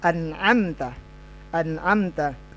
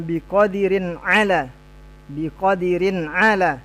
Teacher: nun sukun atau tanwinnya dibaca jelas, tidak boleh dengung. Itu dibaca izhar